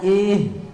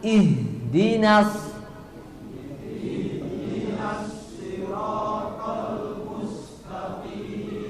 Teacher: i-nya jangan kepanjangan jangan ih tapi langsung